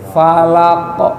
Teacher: Qafnya balik lagi pengucapannya di ujung lidah dalam, maka bakal mantul